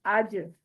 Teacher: जीम साकिन हालत में होगी तो भी आवाज हम जो हिला के इसकी अदायगी करेंगे · جیم ساکن حالت میں ہوگی تو اس کی بھی آواز ہم جو ہے نا ہلا کے اس کی ادائیگی کریں گے، یعنی مخرج پہ رکھ کے چھوڑ دیں گے اس کو، تو پھر اس کی آواز پلٹ کر آئے گی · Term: कलला